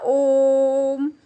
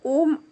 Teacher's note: ओम में जो ओम ये बीच में आता है यह क्या होता है प्लुत स्वर होता है जिसमें कि तीन गुना समय लगता है